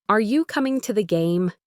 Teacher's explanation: Your voice goes up on game almost like you're lifting the question off the ground. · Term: rising intonation